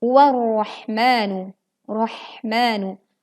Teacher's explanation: Hati-hati ra-nya tebal tetapi ha-nya tipis.